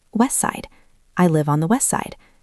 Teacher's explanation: Let's try one with the word west, like west side. West ends in T. Side starts with S. The T disappears completely because the S sound is so strong.